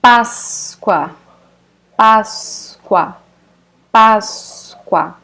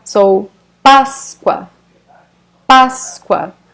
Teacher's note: the most important syllable is the first one